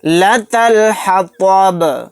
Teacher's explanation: لتلحطب، تو کو موٹا یعنی پر پڑھیں گے، با کو ساکن بنا کر پڑھیں گے اور اس کے اندر قلقلہ بھی کریں گے کیونکہ یہاں پر آیت ہو رہی ہے۔